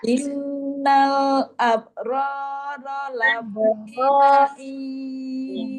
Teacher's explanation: Innal jadi suaranya nggak lebih ditinggiin, nggak lebih keras gitu, sama sejajar samanya.